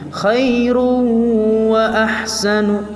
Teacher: Selanjutnya yaitu khairun wa ahsan, yaitu terdapat hukum bacaan idgham bi gunnah karena dhammatain bertemu dengan waw, khairun, maka dibaca agak sedikit dengung wawnya